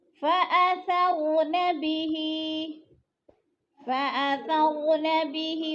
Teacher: را کے اوپر جزم ہے اور اس سے پہلے زبر ہے تو را کو پر پڑھا جائے گا